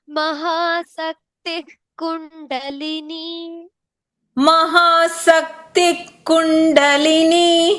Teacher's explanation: Mahasakti Kundalini. There's a visarga after it is Mahasaktihi Kundalini.